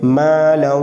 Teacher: الف مدہ تو ایک الف تک کھینچ کے پڑھیں گے